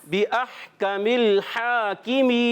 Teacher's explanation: پہلا بھی ہا حلق کے درمیان والے حصے سے اور دوسرا بھی ہا حلق کے درمیان والے حصے سے. اور یہ لام جو ہے یہ ہلنا نہیں چاہیے.